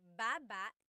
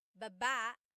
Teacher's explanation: Emphasis is on the first syllable